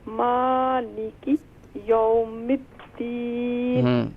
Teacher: میم پر کھڑا زبر ہے، اسے ایک الف کی مقدار کھینچیں